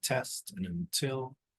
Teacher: we did hear the aspirated T at the beginning of words and also stressed words